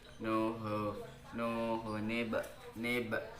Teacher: bacaannya qalqalah sukun sebab ba mati asli